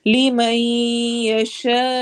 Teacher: لِمَن پہ ادغام غنہ کے ساتھ ہو رہا ہے